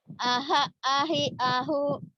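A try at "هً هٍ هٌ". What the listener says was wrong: Kan ada N-nya. Ahan. Ahan, ahin, ahun.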